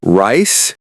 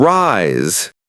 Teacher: The difference is just the final sound. S versus Z.